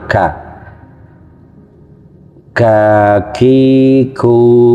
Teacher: Ka hemes itu mengalir